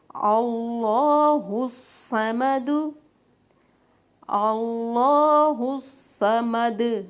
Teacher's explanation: دال پہ پیش تھی، ہم نے ساکن کر دیا، دال پہ جزم لگ گئی، ہم اب قلقلہ کریں گے